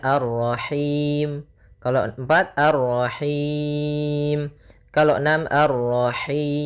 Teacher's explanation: boleh kita panjangkan hi-nya karena bertemu dengan huruf mad, boleh 2, boleh 4, boleh 6. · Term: mad arid lis sukun